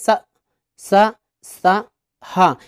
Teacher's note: जो वायु होती है वो घर्षण होकर रगड़ खाकर बाहर निकलती है इसीलिए इनको ऊष्म व्यंजन कहा जाता है अब यहां पर तीन · इनका उच्चारण एक प्रकार की रगड़ यानी घर्षण से उत्पन्न ऊष्म वायु से होता है